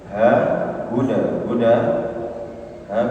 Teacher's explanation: ha keluarkan dari pangkal tenggorokan ya pangkal tenggorokan asal halqi bersama dengan Hamzah di situ hudanil Muttaqin kemudian tanwin